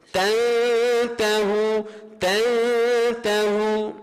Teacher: kena baca dengung dua harakat, lidah tu jangan setuh langit atas.